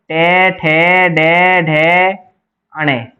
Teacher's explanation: ढ वर्ग का उच्चारण स्थान मूर्धा है